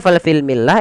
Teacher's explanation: Nah di sini ketika bertemu dengan huruf mim lamnya dibaca dengan jelas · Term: izhar qamariah